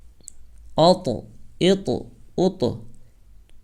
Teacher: چونکہ طا قلقلہ کے 5 اکشروں میں سے ہے اس لیے اس میں قلقلہ ہوگا